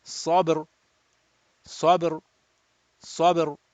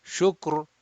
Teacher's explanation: It is not ya sakin, and the letter before has dhamma. So ra sakin will be read mufakham rounded.